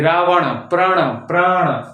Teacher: तालू के थोड़ा सा पीछे मूर्धा में जीभ टकराती है। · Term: टवर गण